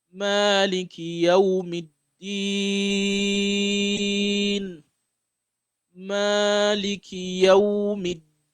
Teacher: So the meme, make sure you give it the Madd al-Tabi'i, the 2 count pronunciation.